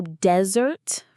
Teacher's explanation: The word you pronounced desert with the stress on the first syllable is the hot sandy place like the Sahara desert.